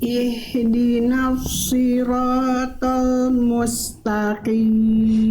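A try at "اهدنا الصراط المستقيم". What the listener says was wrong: Berarti nanti PR bunda tinggal tebalkan huruf shad, kuatkan lagi pangkal lidahnya. Tapi sudah bagus, sudah tidak menjadi huruf shin. Kalau tadi yang awal bunda lafalkan itu shin, ihdinas shi, jadinya salah besar banget tuh. Ya, karena berbeda huruf.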